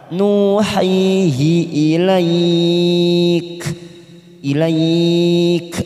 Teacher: 4 harokat kita panjangkan dengan posisi bibir kita tersenyum karena ada huruf ya yang disukun